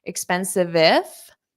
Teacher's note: you can hold out that v sound and connect it to the if.